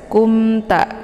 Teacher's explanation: ini dinamakan dengan idhar syafawi. Cara bacanya mimnya dibunyikan secara jelas. Kumta, cukup ditekan saja, tidak perlu ditahan, ya.